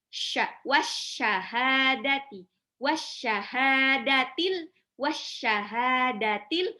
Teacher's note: Alif Lam Syamsiah tidak dibaca langsung lebur ke huruf syin titik tiga ya